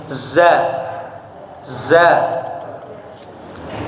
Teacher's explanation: Huruf za itu terletak makhrajnya di antara ujung lidah ya dengan belakang gigi bawah ya, ada getaran.